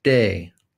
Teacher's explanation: We have our mid, front, tense, unrounded A vowel, as in day.